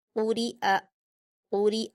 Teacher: اس میں بھی آپ کو حمزہ کے مخرج کو بہت اچھے سے واضح کر کے پڑھنا ہے، یہ یہاں پر یا نہیں ہے بلکہ حمزہ ہے، یا کی شکل لیے ہوئے حمزہ ہے تو ہم اس کی آواز کو حمزہ کی طرح ہی ادا کریں گے، قُرِئَ قُرِئَ۔ قاف پر حرکت جلدی پڑھیں گے اور حروف مستعلیہ میں سے ہے تو پر پڑھا جائے گا، را پر زیر کی حرکتیں جلدی پڑھیں گے اور باریک پڑھیں گے، حمزہ پر حرکت اس کو جلدی پڑھیں گے۔